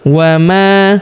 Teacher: huruf ma kita panjangkan 2 harokat karena terdapat alif di depannya. Wa ma yakfuru, huruf kaf berharokat sukun kita berikan hembusan.